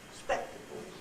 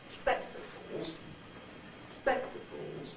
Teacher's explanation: What we've now got is high, low, and a rise at the end, which is the general skeleton for a fall rise nuclear tone.